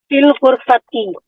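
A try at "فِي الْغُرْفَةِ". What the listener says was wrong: آپ نے یہاں دو مسٹیک کی ہے نا؟ تو ہوا فی الغرفتی، جب ال لگ گیا تو ان کی آواز ختم ہو جائے گی.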